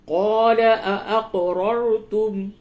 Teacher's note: قاف میں قلقلہ کیجئے اور یہ را کو پر کیجئے، دونوں را کو پر کریں